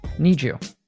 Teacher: Then we have some morphing here. When a D is followed by a Y, we often transform it into a J sound. So, need you becomes need you.